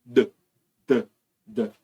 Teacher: tem nenhuma vibração aqui nada que vai vibrar você faz nada se você pronuncia o d o d vai fazer vibrar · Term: sonoro